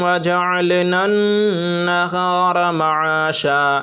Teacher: نن پہ غنہ ہوگا کیونکہ نون پر تشدید ہے